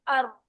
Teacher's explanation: दाल है अ जबान आगे वाले दांतों के किनारों से लग रही है नीचे से और आवाज में तसादुम हो रहा है बात समझ आ रही है र है अर र जब जबान की नोक और ऊपर वाली तालु पर जाकर टकरा रही है · रॉ जबान की नोक और ऊपर वाली तालू पर जाकर टकरा रही है। हल्के से टकराए या जोर से टकराए आवाज तो पैदा हो रही है, अर।